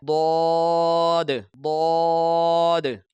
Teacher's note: یہ جو ضاد کا مخرج ہے، زبان کی کروٹ یعنی کہ دائیں بائیں کا حصہ اور اوپر کی جو داڑوں کی جڑ ہے، وہاں سے اس حرف ضاد کو ادا کیا جاتا ہے۔ یہ دیکھ لیں، یہ جو گرین حصہ ہائی لائٹ کیا ہوا ہے، یہ زبان کی کروٹ ہے، یہ زبان ہے، اور اس کا جو دائیں بائیں کا حصہ جب اس جگہ سے ٹکراتا ہے داڑوں کی جڑ سے، تو یہ حرف ضاد ادا ہوتا ہے۔ · یہ زبان کے دائیں بائیں اور داڑوں کی جڑ سے اس کو ادا کیا جاتا ہے حرف حافیہ کو، یہ مخرج نمبر 7 ہے۔